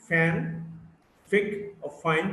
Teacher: the f, which is a voiceless labiodental fricative, and the word fan, fig, or fine.